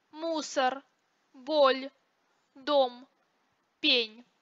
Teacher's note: оглушению не подвергаются только сонорные согласные р л м н